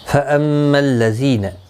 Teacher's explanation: میم مشدد پر گنہ ہوگا، گنہ کے ساتھ پڑھیں گے. ذی یا مدہ ہے، ایک الف کی مقدار کے برابر کھینچ کر پڑھیں گے، نہ کو کھینچنا نہیں.